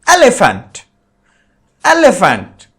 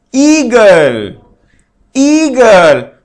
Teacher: in elephant the sound of the e is very shorter and in Eagle it is longer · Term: long vowel